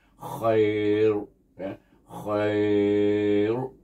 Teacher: Khair bunyi dengan takrir ra itu dan dibaca dengan mad lin dua harakat